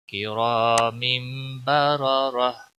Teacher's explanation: وقف کی صورت میں ہا ساکن ہو جائے گا کرام بررہ. دونوں را موٹے پڑے جائیں گے